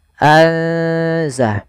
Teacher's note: ikhfa di antara keduanya, sehingga nunnya samarkan ke zai